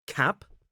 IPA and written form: kæp (cap)